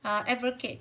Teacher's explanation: Advocate cũng sẽ rơi vào âm tiết đầu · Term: trọng âm